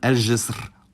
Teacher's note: the voiced postalveolar fricative [ʒ], which does not geminate with ال